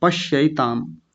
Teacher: और ज्यादातर लोग पश्येताम बोलते हैं, गलत उच्चारण करते हैं। पश्येताम नहीं, पश्यैताम, य अय की मात्रा है ये